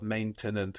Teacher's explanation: You can hear that E in the middle of maintenant getting totally disappeared